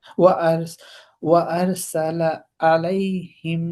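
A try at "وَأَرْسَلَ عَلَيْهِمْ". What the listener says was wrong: আলাইহিম না, আইন, আলাইহিম, গলাটা চাপ দিয়ে ধরতে হবে, মনে হয় যেন কি একটা চাপ দিছে, এখন ও কষ্ট করে বলছি।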